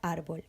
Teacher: el acento tónico que está en la y dividimos en sílabas vemos que el acento tónico está en la penúltima sílaba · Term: palabras llanas, llana